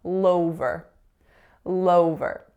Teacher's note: because of linking, that dark L is becoming light because we're saying all-over. So the L goes with over